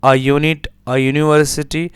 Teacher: Here U has the consonant sound of Y.